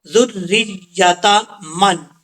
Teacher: ذال یہ بغیر سیٹی کے ساتھ پڑھا جائے گا، اس کو سیٹی کے ساتھ پڑھنے کی ضرورت نہیں ہے۔